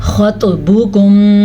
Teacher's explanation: خا موٹا پڑا جاتا ہے، طوا بھی موٹا پڑا جاتا ہے، کیونکہ یہ دونوں حروف مستعلیہ میں شامل ہیں۔